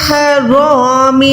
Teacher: رو کے ساتھ یہاں پر الف بھی موٹا ادا ہو جائے گا، کیونکہ الف موٹا تب ہوتا ہے جب اس سے پہلے والا حرف موٹا آئے گا۔ رو پہ زبر ہے تو رو تو موٹی آ جائے گی، تو رو کے ساتھ یہ الف بھی ہم موٹا ادا کریں گے، پر ادا کریں گے۔